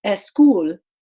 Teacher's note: You have to have a vowel in front of it. So a word like school might be pronounced as escool, because in Spanish, that's the phonotactic rule. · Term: S clusters